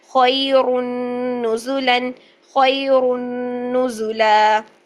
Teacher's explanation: جب وقف کرتے ہیں تو ایک زبر اور الف کے ساتھ، یعنی الف مدہ کی شکل میں 2 حرکات کھینچ کے لمبا کر کے اس کو وقف کر کے پڑھتے ہیں